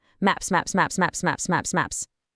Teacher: It's just one fluid movement, right? No space for an extra syllable.